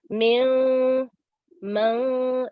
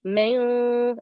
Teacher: Okay, but Ikhfa, we applied 2-second nasal sounds, you know, min, man, like that, yeah? And our tongue does not touch the roof of our mouth. It remains halfway, so we don't say the noon, it's hidden. Min, like this, yeah?